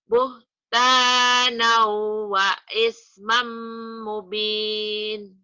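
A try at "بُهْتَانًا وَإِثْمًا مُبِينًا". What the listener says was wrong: Nah, nanya ketinggalan. Mubina. Buhtanau. Buhtanau wa ismam mubina.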